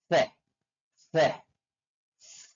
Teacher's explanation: ujung gigi atas se se tanpa ada getaran pada gigi dan pada tenggorokan